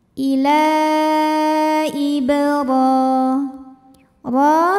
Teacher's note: maka cara bacanya ditebalkan pangkal lidah kita naikkan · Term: tafkhim